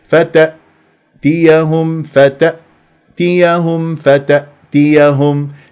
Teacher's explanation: نصفي الهمزه بقفله اوتار الصوتيه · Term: الهمزه الساكنه